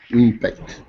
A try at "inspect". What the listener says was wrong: I want to hear the S. Inspect.